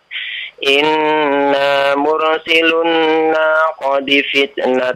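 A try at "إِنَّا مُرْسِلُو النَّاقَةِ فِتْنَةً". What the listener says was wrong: Naqati, tak bukan dal itu ya. Iya, coba lagi.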